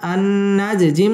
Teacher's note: কলকলার হরফ এখানে কলকলা করে ধাক্কা দিয়ে পড়তে হবে